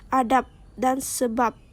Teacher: Karena konsonan hambat letup bersuara B tidak mungkin terjadi pada posisi koda. Ketika dinetralisasikan menjadi hambat tidak bersuara, yaitu P, sama dengan realisasi yang biasa terjadi dalam fonem P.